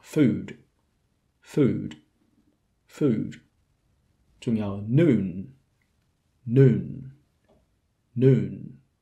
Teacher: 跟住落嚟介紹另一個好唔穩定喺長度上好唔穩定嘅 vowel 嘅雙元音啦。咁就好多人都會覺得係個單元音，但其實又係唔係啦。咁佢好多時會一個雙元音出現啦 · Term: goose vowel